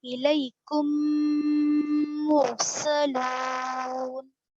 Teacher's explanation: اس قاعدے کو ادغام شفوی کہتے ہیں. میم ساکن کے بعد میم آئے تو وہاں پر میم کو میم سے ملا کر غنہ کے ساتھ پڑھا جائے گا. اس کو ادغام شفوی کہتے ہیں. · کم پہ غنہ کرنا 2 الف کے برابر